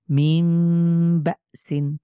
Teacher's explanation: নুন সাকিনের পরে বা হয়েছে আমরা এই নুন সাকিনকে মিম ধরে পড়ছি